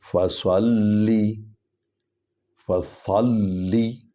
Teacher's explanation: فا ہے، سو زبر لم سل لم زر لی، فصلی، فصلی، فا جو ہے یہ حروف شفوی ہے، ہونٹوں سے ادا ہوتا ہے